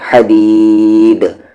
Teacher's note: پھر دال پر قلقلہ ہو جائے گا کیونکہ رکنے کے سچویشن میں دال پہ جزم آ رہا ہے